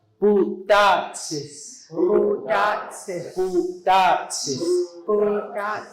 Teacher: With the sound of the P sounding like a B, and then with the letter T sounding like a D.